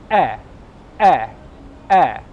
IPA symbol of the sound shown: 'e'